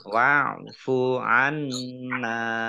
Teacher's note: nun tasdid ya dibaca gunnah atau mendengung, ditahan 2 harokat